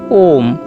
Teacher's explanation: जब हम ओम बोलते हैं तो ओ को 3 मात्रा में जोर से बोला जाता है · इसके उच्चारण में 3 मात्रा का समय लगता है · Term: प्लुत स्वर